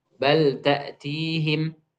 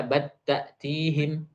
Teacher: selain lam dan ro, maka bal lam pada bal itu tidak diidghamkan, melainkan diizidharkan.